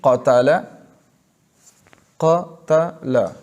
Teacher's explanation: یہ جو قا ہم نے پڑھا قاتل، تو یہ 2 زبر کے برابر ہم نے بڑھایا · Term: مد اصلی